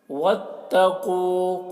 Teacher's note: قاف کو پر پڑھیں گے کیونکہ قاف حروف مستعلیہ میں سے ہے